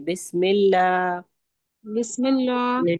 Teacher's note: بسم اللہ کے لام کو بھی باریک پڑھیے.